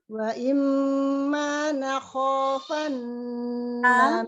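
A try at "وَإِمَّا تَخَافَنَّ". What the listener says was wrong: Afwan. Ini ta bukan na.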